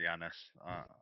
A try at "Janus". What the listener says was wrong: Oi! Oi, it's not Yanis, it's Janus. The J is heavily pronounced.